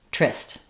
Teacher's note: when we have an E r in the middle that's unstressed, sometimes that syllable just drops and instead of tuh rest, we just get trist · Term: r blend